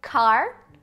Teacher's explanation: o K, é desvozeado, porque não tem vibração das pregas vocais, como em car.